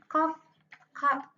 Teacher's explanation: Huruf kaf ini berada di langit-langit belakang. berupa inf yaitu letupan ee tidak bersuara dan tipis.